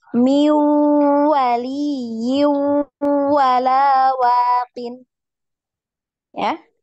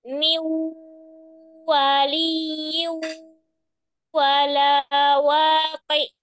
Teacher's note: huruf waw ini di bibir ya, makhrajnya di bibir. Jadi dimoyongkan bibirnya ya.